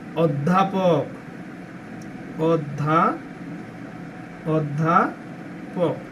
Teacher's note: সংবৃত উচ্চারণ হচ্ছে মুখটা একটু গোল করে হয় ও